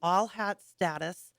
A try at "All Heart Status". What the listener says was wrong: Hearts. You said hat. You did. You You keep saying hat.